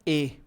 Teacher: ए बना हुआ है अ प्लस ई से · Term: कंठ मूर्धन्य स्वर